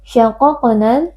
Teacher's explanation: Mim tasydid wajib berdengung. Syaqaqnal huruf qaf, huruf tebal, dua-duanya kita baca dengan mengangkat pangkal lidah.